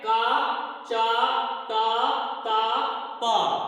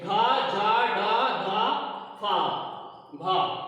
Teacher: उच्चारण करने पे ध्वनि का जो कंपन है वह होता है, इसीलिए इसको सघोष बोला जाता है